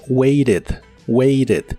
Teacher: en inglés americano casi siempre cambian la T de esta palabra por R, así que la escucharás como waited.